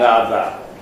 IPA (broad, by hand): ɑðɑ